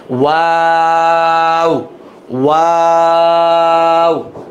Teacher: আর ওয়াওটা হচ্ছে ঠোঁট গোল করে শুরু, গোল করেই শেষ